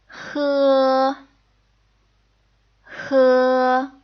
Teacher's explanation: it has slightly more restricted air flow than the H sound in American English so what you can do is make this sound by closing